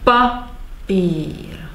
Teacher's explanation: We have stress on pa and elongation of the pír. Papír. It's like rhythm in music and the note length in music.